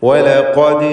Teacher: ഖൽഖല സുഗ്റ നൽകി ദാലിൻ്റെ സുക്കൂനെ ഹറക്കത്ത് പോലെ ചലിപ്പിക്കണം.